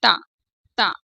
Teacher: जीभ का जो हमारा अगला हिस्सा ऊपर के दांतों के पिछले हिस्से को छूता है · तो ये जीभ हमारी दांत से टकरा रही है और दांतों से टकराने की वजह से इन्हें दंत व्यंजन हम कहते हैं।